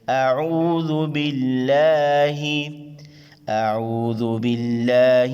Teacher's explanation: لفظ اللہ کے لام سے پہلے زیر ہے. لفظ اللہ کے لام کو باریک ادا کریں گے.